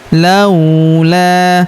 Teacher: Laula huruf la kita panjangkan dua harakat karena terdapat alif di depannya.